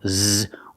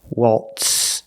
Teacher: You see the letter Z, but we don't pronounce the zebra sound, z. We use the true S sound, waltz. So the T and the S together make the sound tss, tss, tss.